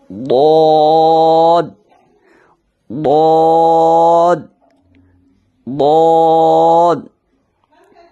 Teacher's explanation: تو یہ بھی خیال کرنا ہے کہ زبان کی نوک داڑھوں سے نہ ٹچ ہو اور نہ ہی جو ہے سائیڈ جو ہے وہ دانتوں سے ٹچ ہو، ٹھیک ہے؟ سائیڈ داڑھوں کے ساتھ ٹچ ہو، دانتوں سے نہیں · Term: حرف حافیہ